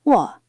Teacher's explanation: The third tone has a falling-rising or dipping contour. In isolation, it dips, but in natural phrases, it is often realized just as a low tone.